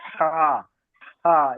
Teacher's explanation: এই হাটা হলো কণ্ঠর মাঝখান থেকে হা, হা একটু চাপ দিয়ে।